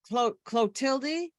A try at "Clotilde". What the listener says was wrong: the E is silent.